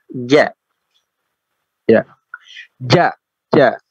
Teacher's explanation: Jadi tidak keluar nafasnya tertahan